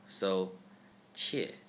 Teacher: Qi is ch with flat tongue.